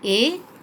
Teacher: जो वर्णों को का उच्चारण करते समय ध्वनि जो है कंठ और तालु दोनों को स्पर्श करती है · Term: कंठ और तालव्य